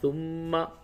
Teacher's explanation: ہجے یوں ہوگا: ثا میم پیش ثم، میم زبر ما، ثم، میم پہ تشدید ہے، غنہ کریں